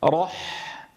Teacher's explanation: لأنها جاورت الراء المفخمة، فانتقل هذا التفخيم إلى الحاء، والأصل أن تخرج الحاء مرققة كما تدربنا وتعلمنا.